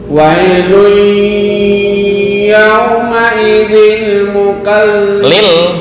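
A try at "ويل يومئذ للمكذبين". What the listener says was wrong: Lilnya mana? lil.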